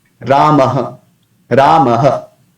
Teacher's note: while pronouncing visarga, we don't have to hold it. When we pronounce ha, this particular syllable, we have to hold it.